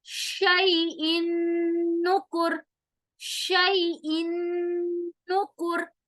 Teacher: نیچے دیکھیں نون کی مثال شیئن نکر، شیئن نکر، ان نکر، ان میں ان ای اور نون دونوں کو ہم ایک دوسرے کے اندر مرج کر رہے ہیں اور نون کو ہم ناک میں لے جا رہے ہیں، غنہ ہو رہا ہے